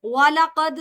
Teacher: दाल साकिन में है, कलकला सुगरा होगा